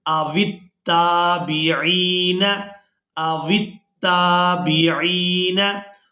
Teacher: हमज़ा ज़बर आ, वाव ता ज़ेर वित्ता, खड़ी ज़बर ता, अवित्ता, बादेर भी, अवित्ताबी, आइन या ज़ेर ई, अवित्ताबिई। यहाँ आइन को या मद्दा के साथ मिलाते हुए खींच कर अदा करेंगे। नून ज़बर न, अवित्ताबिईन, अवित्ताबिईन।